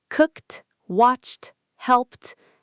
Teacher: The t sound after voiceless sounds like k, p, s, sh, ch. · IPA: /t/